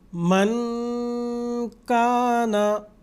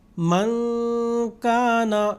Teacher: نون کو پوشیدہ ہم نے ادا کیا ہے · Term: اخفا